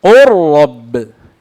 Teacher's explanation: إذا نلاحظ أن اللام أدغمت في الراء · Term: متقاربين